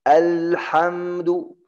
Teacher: Yang salah al. Karena lam tibis, bukan tebal.